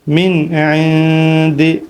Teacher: نون پہ اخفا نہیں کریں گے کیونکہ آگے عین حروف حلقی ہے